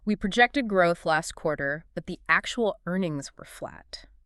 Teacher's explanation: Stressing actual makes the flatness the new crucial piece of information. That's the headline.